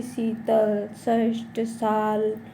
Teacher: एक स जो कि तालव्य से बोला जाता है, और दूसरा सा मूर्धन्य से, और तीसरा सा दंतमूल से। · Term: ऊष्म व्यंजन